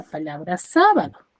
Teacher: Ya dijimos que sa es la mayor fuerza de voz, entonces es su sílaba tónica.